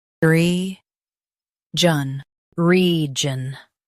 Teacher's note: Emphasize re and keep jun light.